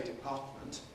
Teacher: It is perfectly possible to say [dɪˈpɑːtmənt] with an alveolar [t] nasal-released